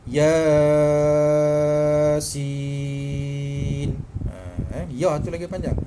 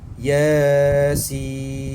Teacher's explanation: Sebab bila dieja, ya itu terdiri daripada 2 huruf sahaja. Dan sin itu hendaklah dipanjangkan 6 harakat pada ejaan si itu